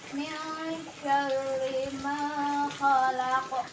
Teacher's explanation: qaf diwakafkan menjadi qalqalah kubra, dan juga bunyinya dipantulkan juga ya